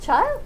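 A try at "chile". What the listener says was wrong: it's chill supposed to be like child but like you don't pronounce it D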